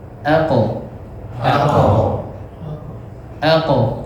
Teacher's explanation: jadi huruf qaf ini kalau disukun dia bukan ake tapi ditebalkan ya.